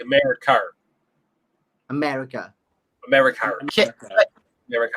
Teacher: you guys tend to say R at the end of a word that ends with an A